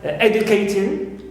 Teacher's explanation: Also, we have ing of the gerund, clear, of the gerund, like educating, as usual we stress always a, clear, first syllable, and not ting, which is neutral